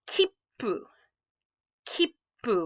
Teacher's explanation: Hold that p sound just a little extra second. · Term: little tsu